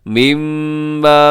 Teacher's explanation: مما میم مشدد پہ غنہ کیجیے گا